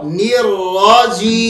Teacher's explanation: آخر میں میم ساکن کریں گے, اس پر تھوڑا سا غنہ کریں گے